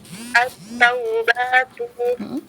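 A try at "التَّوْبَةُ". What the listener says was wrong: Panjang pendeknya diperhatikan. Huruf ba-nya pendek ya. At-taubatu.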